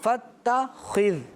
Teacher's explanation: انہوں نے خا کو موٹا پڑھا اور ذال کو باریک پڑھا. فتخذ, خی موٹا, باریک, فتخذ اس طرح.